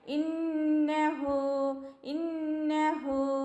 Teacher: ഹാൻ്റെ കൂടെ വാവ് മദ്ദുണ്ട്. അപ്പോൾ അവിടെ എന്താ ചെയ്യണം, നമ്മൾ 2 കൗണ്ട് നീട്ടണേ.